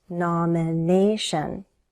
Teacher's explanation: Primary stress is on the third syllable.